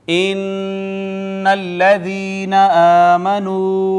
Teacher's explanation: نون مشدد یہاں پہ ہم غنہ کریں گے